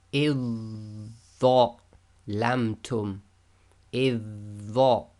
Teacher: So we ignore the dhal completely, join directly to the dha.